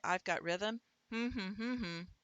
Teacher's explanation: the M is syllabic. It is truly two syllables